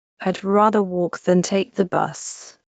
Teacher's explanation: the word than is almost always weak. It sounds much closer to then than to than.